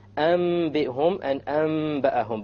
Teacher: You convert the noon to the meme with a ghunna. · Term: iqlab